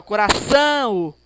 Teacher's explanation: Primeiro, o A é maior, o A é vogal, depois o O, semivogal. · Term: ditongo nasal